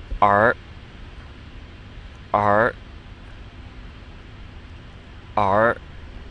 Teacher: three times new and then let's try the r again because it's not like er really it's back in the throat